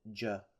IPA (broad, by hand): dʒː